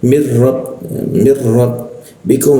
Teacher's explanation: Ro itu jelas tidak usah ditahan.